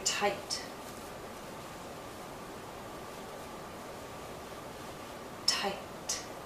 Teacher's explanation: I have this vowel sound but because the T follows it's shorter